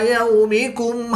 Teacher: واو ساکن سے پہلے یا پر زبر ہے تو واو لین اس کو لمبا نہیں کریں گے